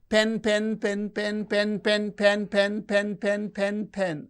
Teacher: the pitch is fluctuating it is going up and coming down going up and coming down. So it is very natural human phenomenon the pitch variation which causes inonation.